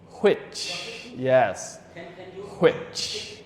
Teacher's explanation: some people may pronounce it as which, with the ha, with the H.